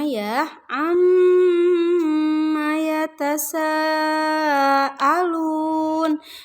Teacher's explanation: di ayat yang pertama ada mim bertasydid jadi harus ditahan dulu dua ketukan atau dua harokat